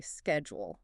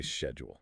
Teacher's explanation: Just that skid versus she sound